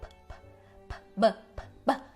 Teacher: Então vamos ver um exemplo aqui da bilabial plosiva, que também é chamada de stop em alguns quadros, mas essa significa a mesma coisa, há uma obstrução na passagem do ar, uma explosão, né, na passagem do ar